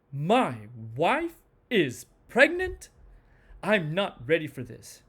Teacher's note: Okay, well, let's look at that because that one is a little bit interesting. The change in pitch for anger falls on each word because when we are angry, we tend to stress each word singly.